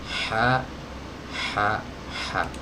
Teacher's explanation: Ha ini adalah huruf yang keluar dari tenggorokan bagian tengah ya, dari tenggorokan bagian tengah, dari katup kecil di sini. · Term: huruf ha